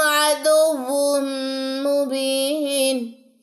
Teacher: پہ ہم ادغام کرتے ہیں اور ادغام مع الغنة یعنی کہ واؤ کی دونوں پیشیں ون کی جگہ وم کی ساؤنڈ دیں گی دونوں پیشیں میم سے ملے گی عدو وم میم کی آپ